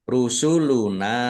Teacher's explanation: Mim sukun bertemu dengan huruf ro idhar syafawi dibaca jelas